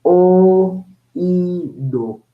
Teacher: la o es una vocal abierta y la i es una vocal cerrada